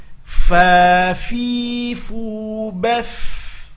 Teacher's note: hati-hati nampakkan mengalir nafas ketika membunyikan, karena ada sifat hamas pada huruf fa.